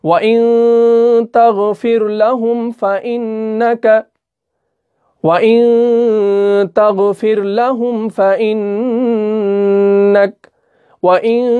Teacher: نون کو ہم چھپا رہے ہیں، ہم نون کو پورا نہیں پڑھ رہے ہیں۔ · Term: اخفاء